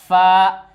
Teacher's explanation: नीचे के होंठ की तरी और सनाया उलिया का किनारा